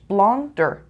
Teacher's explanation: 2 syllables. The stress is on the first syllable.